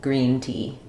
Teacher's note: It's a high tense front vowel. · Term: E sound